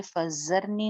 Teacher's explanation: زال میں سیٹی نہیں آئے گی، زال بغیر سیٹی کے